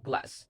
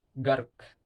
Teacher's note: Air builds up behind the tongue and is released when the sound is made. The voice is on. The vocal cords are vibrating.